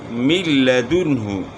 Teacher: نون ساکن کے بعد لام آ گیا تو اس لیے یہاں جو ہے غنہ نہیں ہو رہا